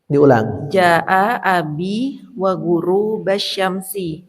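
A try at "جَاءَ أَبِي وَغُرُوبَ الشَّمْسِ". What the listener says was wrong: Nah, ini harus difathahkan guru basyamsi karena tidak istirak.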